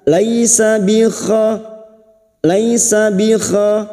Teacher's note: Laisa fathah bertemu ya sukun kita lunakkan.